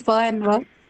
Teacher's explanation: They're labiodental sounds, right? They are fricatives, correct?